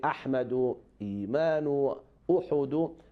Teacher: The first one, as you say, it is for alif when alif on the top or underneath has hamza. So we pronounce hamza, we don't pronounce alif. As we say ahmadu, imanu, uhudu, we pronounce hamza, not alif.